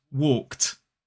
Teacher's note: When a base word ends in an unvoiced sound, a voiceless sound, that ED is pronounced t. T is also unvoiced.